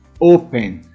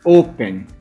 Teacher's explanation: Veja que o O, a primeira sílaba, é a mais forte.